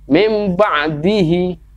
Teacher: Jadi nunnya diganti huruf mim yang mati. Kemudian langsung diteruskan huruf ba. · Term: iqlab